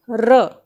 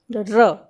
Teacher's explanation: लुंठित इसीलिए क्योंकि जब हम र का उच्चारण करते हैं तो जो हमारी जीभ है वो ऊपर की तरफ मुड़ी होती है, और प्रकंपित इसीलिए है कि जब हम र का उच्चारण करते हैं तो जो जीभ हमारी ऊपर की तरफ मुड़ी हुई है वह धीमे धीमे कांपती हुई आगे आती है, तब र का उच्चारण होता है।